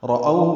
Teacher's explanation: فلما دو حرکات لمبا کریں گے، رأو میں را پر پڑھیں گے، او وولین ہے، ہونٹوں کو ناتمام گول کریں گے، آگے لائیں گے، ہا کو معروف طریقے سے جلدی پڑھیں گے۔